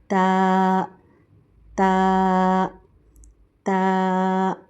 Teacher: تا تا جو ہے ہماری زبان اور دانتوں کی جڑ سے ادا ہوتا ہے، یعنی ہماری زبان کی نوک ہمارے اوپر کے سامنے والے دانتوں کی جڑ سے لگے تو تا ادا ہوتا ہے